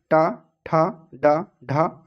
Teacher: यहां पर ट वर्ग जिनमें ट ठ ड ढ ड़ का उच्चारण स्थान मूर्धा या तालू के पिछले भाग से होता है इन्हें मूर्धन्य ध्वनियां भी कहते हैं